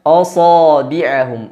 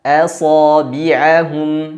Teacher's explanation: Di sini hamzah bertemu dengan sad. Sad huruf yang dibaca dengan tebal. Maka jangan sampai hamzahnya ikut terpengaruh menjadi tebal, karena masing-masing huruf tidak boleh saling mempengaruhi, karena masing-masing memiliki sifat-sifat tersendiri. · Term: istifal